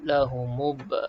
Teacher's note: Terus pergi ke huruf selepasnya, huruf ba mati. Kita pun lantunkan pada ba mati ni ada qalqalah.